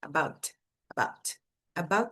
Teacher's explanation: A língua para aqui atrás dos dentes antes de você falar o som de que é um t bem fraquinho